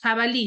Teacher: tiene la mayor fuerza de voz en la última sílaba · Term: palabras agudas